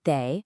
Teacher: it's a neutral tone, so it should be quick and light, almost like it's attached to the word before it. Don't stress it.